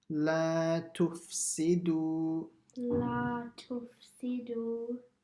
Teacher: next is the la, so it has to be stretched, the madda asli